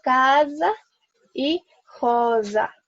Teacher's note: si la S está en medio de dos vocales, la voy a pronunciar con zumbido, como si fuera una Z.